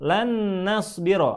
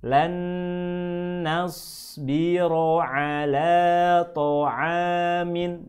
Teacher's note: kedua huruf ini harus digabungkan, harus dibaca idgham menjadi 1